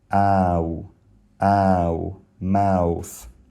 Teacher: The thing is, English has situations like these as well. In my dialect of English, the word mouth has an a followed by a w.